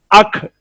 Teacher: اگر فوراً زبان وہاں سے ہٹا دیں گے تو وہاں ہا کی آواز پیدا ہو کر اکھ ہو جائے گا